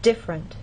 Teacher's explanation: and especially formal speech you might get this pronunciation differerent but often in fast speech you lose that middle sound and you get different